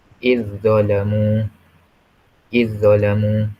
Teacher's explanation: kita masukkan huruf pertama itu ke dalam huruf kedua itu. Huruf pertama yang mati itu ke dalam huruf kedua. Dan tidak ada dengung.